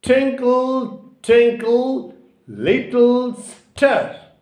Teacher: So the disyllabic words twinkle and twinkle have got stress or accent on the first syllable, and little has also got the stress or accent on the first syllable, and star is a monosyllabic word.